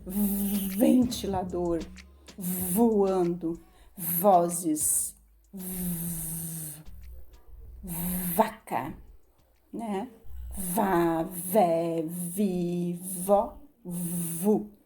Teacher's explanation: A letra V já tem um som um pouquinho mais ventoso. Ó, os dentes de cima vai embaixo no lábio, ó. E sai o ventinho.